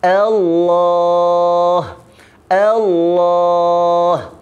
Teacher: rendah pada alif, kemudian lam itu dibesarkan.